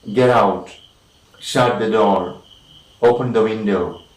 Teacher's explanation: Then we have commands like, commands, get out, shut the door, open the window. Okay, so all these commands, of course, we have the falling tune or the falling intonation